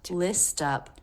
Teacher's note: So we do hear both the S and the T. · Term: ending ST cluster